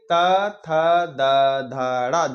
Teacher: है इसमें क्या होगा इसमें हमारी जबान दांतों से टकराए गी जिन वर्णों के उच्चारण में हमारी जीभ का अगला हिस्सा दांतों को स्पर्श करता है उसे हम दंती व्यंजन कहते हैं